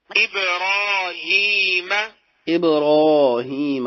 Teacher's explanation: إبراهيم ابراہیم، اب کلکلا بھی کیا، راہیم را زبر کے ساتھ پر پڑی گئی۔